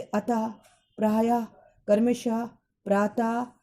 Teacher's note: विसर्ग का उच्चारण हल्के रूप में हाँ ध्वनि के साथ होता है। इसमें वर्ण के आगे के 2 बिंदु लगाए जाते हैं, जैसे अतः, प्रायः, क्रमशः, प्रातः इत्यादि।